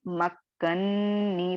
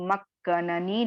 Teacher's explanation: दूसरा वाला पीला नून है इसे मुदगम कर दिया गया